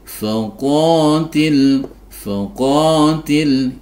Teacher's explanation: faqotil ini bacaan Mad thii karena ada fathah diikuti Alif kecil dibaca Dua harakat atau satu ayunan qofnya ini adalah huruf tebal ini juga i